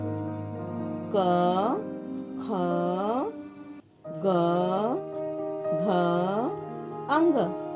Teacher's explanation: क वर्ग क, ख, ग, घ, अंग, इसका उच्चारण कंठ है।